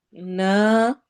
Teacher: الف مدہ ہو رہی ہے، الف سے پہلے زبر آ رہی ہے، دو حرکہ لمبا ہوگا